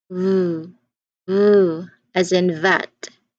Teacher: your top teeth lightly touch your bottom lip and then also push air through